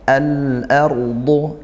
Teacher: huruf tebal dia, isti'la dan itbaq, naik pangkal lidahnya dan juga tertutup rongga mulutnya karena tebalnya huruf dhad.